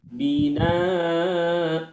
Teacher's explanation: karena fathah tain di akhirnya, maka ibu wajib dibaca binaa, panjangkan dua harokat